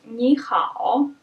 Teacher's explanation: in phrases like this the first syllable changes into second tone so it becomes second and third